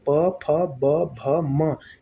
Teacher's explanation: पवर्ग में प फ ब भ म, ये ओष्ठ से उच्चरित वर्ण हो गए